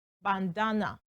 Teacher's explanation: Okay, so looking at the transcription right there, it tells us bandana, and that means the stress is placed on the second syllable, bandana. Okay, and that's the schwa sound at the end of the transcription.